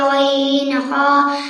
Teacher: 3 নম্বর মাখরাজ হলকের শেষ হইতে